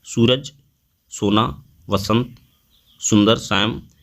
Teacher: दंत सा का बोलने से जीभ ऊपर से दांतों से सटती है